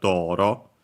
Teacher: accent on the first Mora, so yeah, on the Do in our case